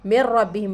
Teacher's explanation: मीम से हम रा को मिलाकर पढ़ रहे हैं, क्योंकि रा के ऊपर तशदीद है। मिर रब्बिहिम रा के ऊपर तशदीद है तो राय मुशद्ददा भी कहेंगे हम इसको। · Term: इदगाम मअल गुन्ना